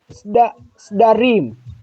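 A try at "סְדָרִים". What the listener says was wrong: Beautiful.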